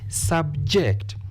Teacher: This word has been used as a verb. Therefore, we stress the second syllable